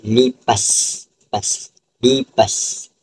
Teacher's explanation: Kemudian yang kedua ialah melibatkan geseran tidak bersuara di bahagian gusi